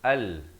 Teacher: Idgham bila gunnah, asalnya an-lan.